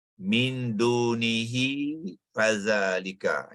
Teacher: Mad silah, ya, iaitu di mana selepas huruf ha ni sepatutnya ada ya kecil, ya. Ya kecil untuk menunjukkan dhamir hi itu perlu dibaca sepanjang 2 harakat.